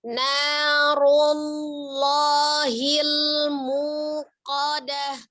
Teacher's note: Memonyongkan bibirnya pada saat ru itu karena dia dhammah saja.